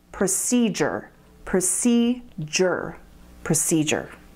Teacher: Now listen to the third syllable, procedure. See, it's spelled with a D, but most native speakers say it like a J